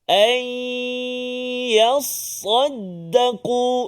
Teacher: Hati-hati pada nun mati bertemu dengan ya, idgham ma'al ghunnah. Jangan cepat bacaan kita, kena bagi dengung 2 harakat.